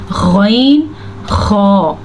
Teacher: हलक के पहले हिस्से से ये दो हर्फ निकलते हैं, गौइन और खौ